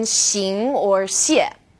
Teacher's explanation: this sound is somewhere in the middle of SH and S. And this one's a bit tricky because the initial SH is pronounced like sh is in English.